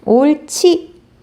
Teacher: 리을 히읗 뒤에 지읒이 결합되는 경우에는 히읗과 지읒을 합쳐서 치읒, 거센 소리로 발음한다